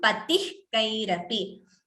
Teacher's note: Visarga followed by ka. Jihva muliya.